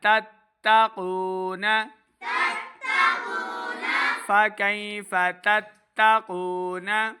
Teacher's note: یہاں پہ تا کی آواز کو موٹا نہیں کرتے، قاف کو موٹا پڑھنا ہے